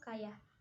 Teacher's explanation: Selanjutnya semivokal platal, yaitu Y. Dihasilkan dengan mendekatkan depan lidah pada langit-langit keras, tetapi tidak sampai menghambat udara yang keluar dari paru-paru